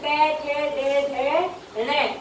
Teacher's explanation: उच्चारण के आधार पर मूर्धन्य व्यंजन